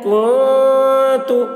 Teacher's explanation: نون ساکن کے بعد حروف اخفا میں سے تا آ رہا ہے، اس لیے نون کی آواز کو ناک میں چھپا کر پڑھیں گے، اس کو اخفا کہتے ہیں۔